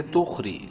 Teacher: را کو باریک پڑھیں گے زیر کی وجہ سے